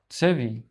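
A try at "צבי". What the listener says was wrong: Yes, and it will be without the e. Tzvi. But you're correct to tell yourself, hey, if I see a shva at the beginning, the two dots like this, at the beginning of the word, a lot of times it's an e. In this case, it's a tzvi.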